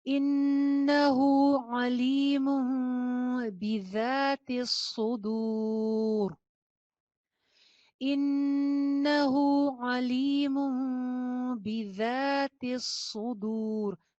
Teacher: الٹی پیش اور واو مدہ بالکل سیم ہوتے ہیں، ایک ایک الف کے برابر دونوں کو کھینچا جاتا ہے